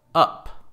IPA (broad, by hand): ʌp